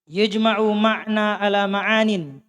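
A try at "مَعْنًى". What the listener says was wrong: Ini maknan ada tanwin ya. Ada tanwin. Dikasih tanwin lah. Dua anunya, fathahnya situ.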